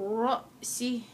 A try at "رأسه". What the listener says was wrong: فتأكل الطير من رأسه. رأسه.